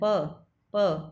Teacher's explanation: आप जब भी प उच्चारण करते हो तो होठ आपस में मिलते हैं